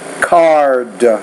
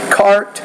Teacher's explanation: the D's a voice consonant and the T's a voiceless consonant